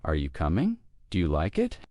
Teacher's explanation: When asking questions in English, our voice usually rises at the end of a yes or no question. For example, are you coming? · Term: rising tone, Question intonation